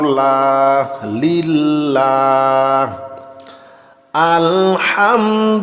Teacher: এখানে লামের উপরে আমরা একটি খারা জবর দেখতে পাচ্ছি তাই আমরা লামে এক আলিফ টান দিব